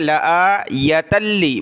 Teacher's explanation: لآ لام کو نہیں کھینچنا، حمزہ کو کھینچنا ہے